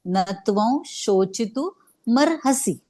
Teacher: मग नत्वं, न वर परत आघात येईल कारण पुढे तो आहे, नत्वं अनुस्वार आहे, अनुस्वाराचा उच्चार वजनातला व येईल